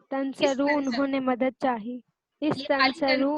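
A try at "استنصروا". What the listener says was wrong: یہ خالی تنسرو نہیں ہے، اس تنسرو اس کو پڑھیں گے.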